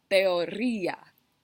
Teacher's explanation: teoría con acentuación sobre la y entonces teoría son cuatro sílabas